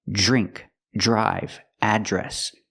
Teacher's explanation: normally we do that with words like drink drive and address we see Dr together we make the sound J like Juice · We see DR together, we make the sound J like juice plus the R and put it together.